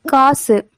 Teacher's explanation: இறுதி எழுத்து குற்றியல் உகரம் எழுத்துனா கால அளவு குறைந்து ஒலிக்கும்